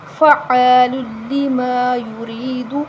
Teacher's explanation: ہم اس کو ایک الف کے برابر لمبا کریں گے اور را کے نیچے زیر ہے تو ہم اس کو باریک پڑھیں گے